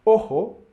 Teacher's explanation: sounds similar to the O in obey or open but shorter